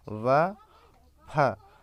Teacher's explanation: दंतौष्ठ यानी निचले होंठ व ऊपरी दांतों से व फ